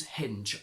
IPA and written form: hɪndʒ (HINGE)